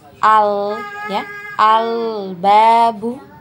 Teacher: lam sukun diusahakan untuk mengalirkan suaranya sedikit ya, dialirkan suaranya sedikit, karena di lam sukun ini mempunyai sifat tawassut ya, atau ada aliran suara ya. Maka kita berikan haknya untuk lam sukun, jadi dialirkan ya.